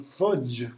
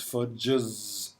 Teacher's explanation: fudge, which ends in a voiced affricate